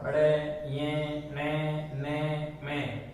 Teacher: इन ध्वनियों, इन पांचों ध्वनियों का उच्चारण नाक की सहायता से करते हैं। नाक और मुंह दोनों की सहायता से समान रूप से उपयोगी हैं इन ध्वनियों के उच्चारण में।